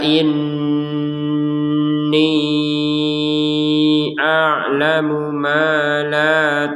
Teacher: kita panjangkan 4 sampai 5 harakat dengan catatan menggabungkan ni panjangnya ni dengan hamzah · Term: harakat bendera